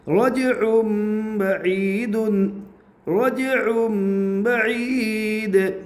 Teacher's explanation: رائے ساکنہ سے پہلے ساکن، ساکن سے پہلے پیش اس لیے رائے ساکنہ پور ہوگی وقف کی حالت میں